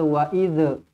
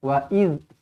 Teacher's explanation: huruf zal mati, jangan sampai kita lantunkan dia macam huruf dal.